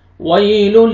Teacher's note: یہ واو لین ہے، واو یا ساکن سے پہلے فتحہ ہے، واو کو آپ نرمی سے ادا کرنا ہے